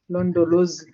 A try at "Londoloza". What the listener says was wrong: Now you replace the Z at the end with the ZA, Chairperson. Londoloza.